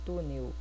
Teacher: a gente escreve com L mas a gente fala com o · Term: ditongo vocálico